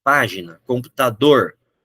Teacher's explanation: vou avaliar qual que é a sílaba mais forte. Computador é a última. Se eu for para a página, é a antepenúltima.